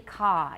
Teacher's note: it's a very long a ah sound